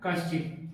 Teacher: सीधा कश्चित ही मिलेगा जिसमें तालब शकार आ रहा है, इसलिए के प्लस चित कश्चित।